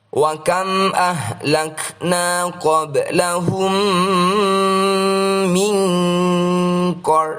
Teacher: Ro sukun yang didahului oleh fathah adalah bacaan Ro Tafkhim, artinya harus dibaca tebal.